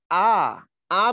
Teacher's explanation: জীবটা নিচের দিকে চলে আসে এবং জীবটার অবস্থান মাঝামাঝি লেভেলে হয়। সামনেও না পিছনেও না।